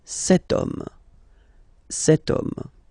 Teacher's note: H is not pronounced, so the first sound that we hear is O